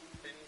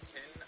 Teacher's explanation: As a speaker of general American English, when I say a phrase like thin tin, I use a dental fricative for thin and then an alveolar plosive for tin